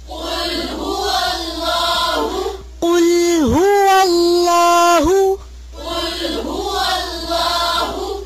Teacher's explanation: قاف کو موٹا کریں